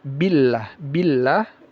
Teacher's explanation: Lafaz jalalah dibaca tipis.